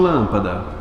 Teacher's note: lâmpada mais forte é o lã ou seja já antepenúltima sílaba